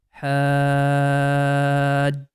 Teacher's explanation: this ha long sound we are going to make it for 6 counts. After making it 6 count, then we are going to connect it with letter jim.